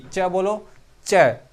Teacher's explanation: अब तालव्य च, च, देखो जीभ को देखो तलवे पे चिपकेगी, च बोलो, च, तो तलवे पे चिपक रही है।